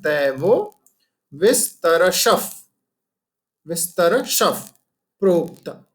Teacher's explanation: श के बाद जो विसर्ग है फिर प्र आ गया, राइट? इसलिए हम उसको विसर्ग को प में कन्वर्ट कर देंगे